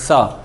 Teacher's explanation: سین کو سختی سے پڑھنا ہے، سیٹی کی سی آواز آتی ہے